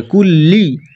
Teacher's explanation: লাম হচ্ছে জিবের আগা এবং ওপর তালুর সঙ্গে লাগাতে হবে